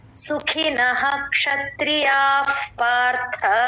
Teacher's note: విసర్గ తర్వాత అక్కడ F sound